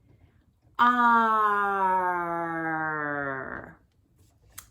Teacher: the tip of your tongue, this part of your tongue, the very end, is curling up and back in your mouth, like this. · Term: retroflex R